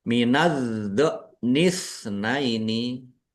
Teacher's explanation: do-nya dibaca double, ditekan dan ditahan biar tampak double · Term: tasdid